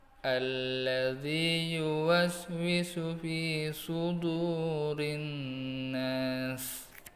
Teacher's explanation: Dan perlu kalian ingat, dalam surah An-Nas setiap akhir ayat diakhiri dengan sin sukun, yaitu makhraj sin sukun adalah tipis, tidak boleh tebal. Bedakan sin dengan shin.